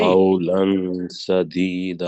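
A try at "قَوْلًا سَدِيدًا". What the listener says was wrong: چلیں، آپ نے لمبا کرے، آپ نے اخفا پھر بھی نہیں کیا، اخفا ہے قولا قولا سدیدا. کریں ذرا جی قولا سدیدا، یہ اصل لفظ.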